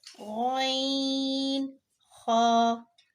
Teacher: ये अदना हलक से अदा होते हैं, यानी हलक के उस हिस्से से अदा होते हैं जो मुंह की तरफ होता है, यानी कि बिल्कुल मुंह से नजदीक होता है, उससे ये 2 हुर्फ अदा होते हैं।